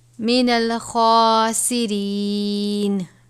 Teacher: خا ہے، خا کو بھی پر پڑھا جاتا ہے، خا کے اوپر کھڑا زبر ہے، یعنی ایک الف کے برابر.